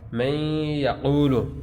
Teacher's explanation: غنہ کی مقدار 1 الف کے برابر ہے